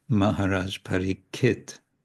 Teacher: in Bengali, the ksha sound, k with retroflex s after it, becomes ka